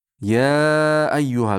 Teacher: Ya ayyuhal to besh harakat miqdorida cho'zamiz. Ya ayyuhal ayyu yada albatta tashudini bildirishimiz kerak.